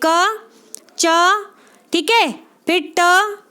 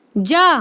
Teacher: अल्प प्राण वे ध्वनियां हैं जिनके उच्चारण में मुख से हवा जो है, यानी कि जो वायु निकलती है, वो कम निकलती है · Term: अल्प प्राण ध्वनियां